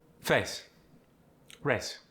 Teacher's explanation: It's kind of long and drawn out, A. You're going to shorten it into a single vowel sound. For instance, face and race are going to become face, race.